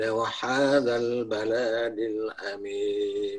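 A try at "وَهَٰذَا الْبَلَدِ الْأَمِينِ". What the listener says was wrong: Baladil pendek.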